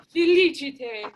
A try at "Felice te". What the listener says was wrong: Okay, no, what I want to do is a little bit slower. With the pointing landing on te.